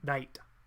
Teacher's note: The Japanese R is a little bit more to the, like, back of the teeth, like that's where the tongue is rested, and then it sort of just comes down. So it would be more like dite.